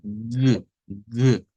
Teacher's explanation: es oclusivo en este caso es eh un sonido que produce se produce digamos en la zona velar es decir viene del velo el velo en nuestro aparato fonador